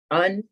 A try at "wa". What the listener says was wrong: So that's not un. That's going to be pronounced as in moon.